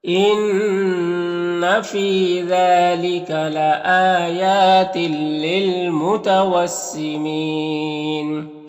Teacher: یہاں پر تنوین کے بعد لام حروف یرملون میں سے، تو تنوین کو لام سے ملا کر بغیر غنہ کے پڑھیں گے، اس کو ادغام تام کہتے ہیں۔